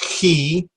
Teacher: key comes from the back of your throat almost if you're gonna basically spit